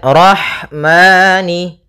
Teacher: Kemudian rahmani. Pada lafal rahmani ada ha sukun. Maka di sini ha mempunyai sifat yaitu sifat hames